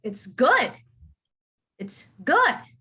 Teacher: i would emphasize the word good